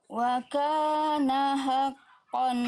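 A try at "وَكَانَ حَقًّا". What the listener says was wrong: Hanya tegaskan lagi. Wa kana haqqan, hak kecilnya kurang tadi, kurang nyawanya kurang. Tekan lagi Bunda.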